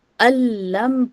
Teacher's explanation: تو ہم نے نون کو ڈراپ کر دیا یہاں پہ، ٹھیک ہے. الم پڑھا اور یہاں پر ہم نے غنہ کی آواز بھی نہیں رکھی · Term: بغیر غنہ کا ادغام